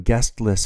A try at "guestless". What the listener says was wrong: Guestless, not guest list.